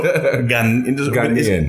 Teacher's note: It's the emphasis on the second syllable.